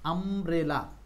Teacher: গুরুত্বপূর্ণ ইউ আছে কিন্তু এখানে ইউ এর উচ্চারণটা আর ইউ নাই ইউ এর উচ্চারণ হয়ে গেছে আব্রেলা মানে এখানে ইউ সমান সমান হচ্ছে আ